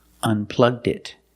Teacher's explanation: Link the D with the next word it. Together, did.